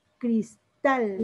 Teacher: el acento se escucha en la última sílaba, pero no termina en cualquiera de esas letras, N, S vocal, termina en cualquier otra, se llaman de acento prosódico, como es este caso. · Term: aguda